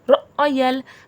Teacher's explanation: حمزہ پہ جزم ہے، تھوڑا جھٹکا آئے گا